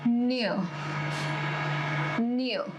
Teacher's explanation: whenever I am using any r sound at the end, I am not producing it.